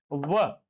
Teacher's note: एक तो पढ़ा हमने दंतोष्ठ। दंतोष्ठ यानी जो दांत और होठों के बीच के भाग से बोले जाते हैं।